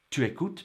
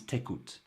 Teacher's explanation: when tu is followed by a vowel, like in our first example, it contracts to t. Tu écoutes becomes t'écoutes.